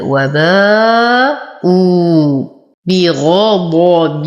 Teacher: ورقق الباء مع إتمام الكسر وفخم الغين والضاد